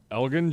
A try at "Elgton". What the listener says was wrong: It is pronounced Elton. Elton, it's a silent G.